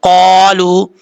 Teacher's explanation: قالو، قاف زبر قا، لام پہ پشلو، قالو. قاف حروف مستعلیہ میں سے پر پڑھا جائے گا · قاف حروف مستعلیہ میں سے پر پڑھا جائے گا. قاف کے آگے الف ہے، ایک الف کی مقدار لمبا کریں گے